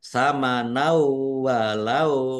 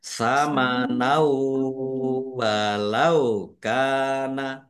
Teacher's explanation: bacaan idgham bighunah masuk dengan mendengung yaitu mendengung wau · Sama nau walau kana fathah tanwin bertemu dengan huruf wawu, bacaan idgham bi gunnah, masuk dengan mendengung yaitu mendengung wawu. Ditandai wawunya ada tasdidnya.